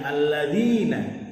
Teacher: Kemudian selanjutnya alladzina, alif lam syamsiyah, karena alif lam bertemu dengan salah satu huruf syamsiyah yaitu dzal. Cara membacanya dengan memasukkan huruf alif lam atau langsung membaca dzal. Berlaku juga hukum at-tabi'i karena terdapat ya sukun yang didahului huruf berharokat kasroh, sehingga huruf zal kasroh dibaca panjang 2 harokat.